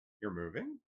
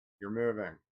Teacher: Statement versus surprised. Saying you're moving with a falling tone acknowledges a fact, but saying with a rising tone communicates surprise.